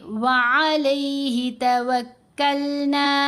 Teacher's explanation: یہ نون کے اوپر زبر ساتھ الف، الف حرف مدہ ہے، تو جب حرف مدہ کے اوپر وقف آیا تو ہم نے توکلن ایسے نہیں کرنا، نون کو ساکن نہیں کرنا بلکہ نون کو حرکت کے ساتھ ہی پڑھیں گے اور اس کو لمبا بھی کریں گے